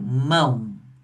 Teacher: E significa que o A, como ele é sempre vogal, ele vai ser a vogal aqui. E o O só pode ser a semivogal, porque a gente movimenta a boca uma vez só, mão. Então, uma é vogal, outra semivogal.